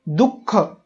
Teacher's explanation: दू म्हणताना उचा उच्चार होतोय. तर दुःख या शब्दामध्ये विसर्गाचा उच्चार करण्यापूर्वी उ या स्वराचा आधार आपल्याला घ्यावा लागतोय